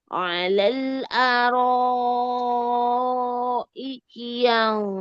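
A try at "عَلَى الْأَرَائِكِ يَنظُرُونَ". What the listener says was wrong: lagi coba makhraj huruf lamnya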